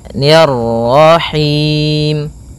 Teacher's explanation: ni tipis ketemu dengan ra yang tafkhim. Ro tebal maka kita baca dengan bacaan tebal rnya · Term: ra tebal